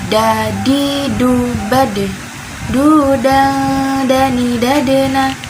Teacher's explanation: ujung lidah bertemu dengan pangkal gigi seri atas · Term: huruf Dal